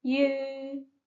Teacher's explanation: So the second example is you where there is no initial but the sound of final ukate that is U with double dot on the top and the tone is the second tone which starts from the low frequency and go to the high